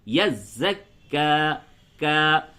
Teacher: بس الف مقصورہ کو ایک الف کے برابر کھینچتے ہیں، یعنی کہ پورا منہ کھل جائے، یزکا، اور اگر مد کریں گے تو یزکا، یہ تھوڑا اس کو بڑھا دیں گے کہ مد کے معنی ہوتے دراز کرنا، کھینچنا۔